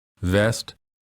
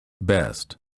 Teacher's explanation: Non-native speakers of some languages have a hard time distinguishing between the B and the V. Remember, for the V sound, the upper teeth touch the lower lip. For the B, both lips touch and fully close so that no air escapes.